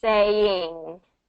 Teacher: I want that ing to be pulled back into the back of the throat